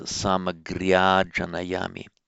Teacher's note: And of course, the visarga, redo this. The visarga drops out because of the following voiced consonant. So samagriya janayami becomes samagriya janayami.